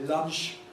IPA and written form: lʌnʃ (lunch)